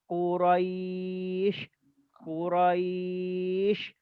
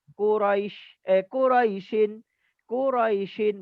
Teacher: Bila kita berhenti maka dia panjang. Tetapi kalau kita tak berhenti dia pendek. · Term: mad lin